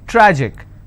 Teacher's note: tragic I will stress on tra